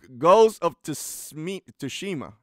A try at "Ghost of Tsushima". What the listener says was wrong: I would say don't pronounce the T. It's like Tsushima, Ghost of Tsushima.